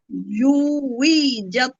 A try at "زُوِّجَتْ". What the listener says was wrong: উই টান হবে না জুই জুই زوجت زوجت জু জুই ওয়াওয়ের উচ্চারণটা সবসময় গোল টাইপের হয় زوجت زوجت